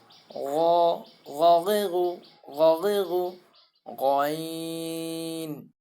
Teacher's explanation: গইন বলার সময় গলার ভিতর থেকে নিয়ে আসতে হবে।